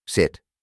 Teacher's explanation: Este sonido es corto y se pronuncia con la boca ligeramente abierta y la lengua en una posición media alta pero no tan cerca del paladar como en el sonido largo I es un sonido breve y relajado por eso a este sonido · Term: la i relajada, I relajada